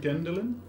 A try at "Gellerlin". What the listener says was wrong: Two more L's than you think.